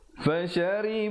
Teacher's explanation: Kalau ri jadi tebal. Di situ ra-nya dibaca nipis. Ra baris bawah.